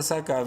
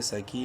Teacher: کاف کو ایک الف برابر لمبا کریں گے ، سکی، نون زبر نا تا میم دو پیش تم، تنوین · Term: مدہ